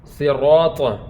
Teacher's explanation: صاد جو ہے یہ حروف مستعلیہ میں سے ہے، صاد کو بھی ہم پر پڑھیں گے۔